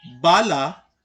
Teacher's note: kung paano nalilikha ang tunog na kinakatawan ng punimang B, sasabihin nating ito ay pabuga, may tinig at palabi.